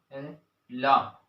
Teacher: पार्श्विक किनारों से वायु टकरा के बाहर निकलती है, ला, इसे पार्श्विक व्यंजन कहते हैं।